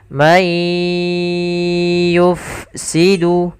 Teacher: Apabila ada nun mati bertemu ya, maka suara nunnya awalnya man. Karena bertemu ya, kita langsung masukkan ke ya. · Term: idgham bi gunnah